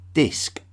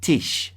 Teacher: the germanic languages often softened the consonant sounds of vulgar latin the d would shift to a tee and the SC sound would shift to an SH sound